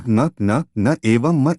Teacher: इस वर्ग में मुख और नासिका से उच्चरित होने वाले वर्ण आते हैं जिनका उच्चारण मुख और नासिका के सम्मिलित योग से होता है। इस कोटि में स्वरों में से अनुस्वार अंग और व्यंजनों में सभी पंचमाक्षरों को शामिल किया जाता है। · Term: नासिक्य